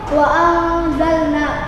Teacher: Itu termasuk hukum ikhfa hakiki karena ada nun mati atau nun sukun bertemu dengan huruf za dan cara membacanya itu samar